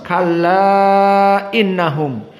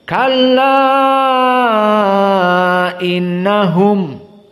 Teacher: mad jaiz munfasil dibaca dalam keadaan al-isba, jadi panjang.